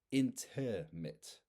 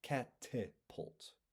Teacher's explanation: And in each of these words, we can see that the second repeated vowel kind of gets turned into a quicker, simpler version of itself. And in linguistics, this is called a shua. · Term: schwa